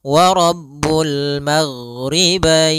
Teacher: ghain adalah sifatnya rokhawah. Rokhawah itu mengalirnya suara